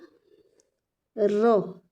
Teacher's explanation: लुढ़काते हुए बोलेंगे, इसको कंपन होगा और लुढ़काते हुए बोलेंगे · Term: लुंठित व्यंजन